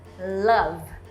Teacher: Olha como o L de love é diferente, ele é mais pra frente, ó. Love.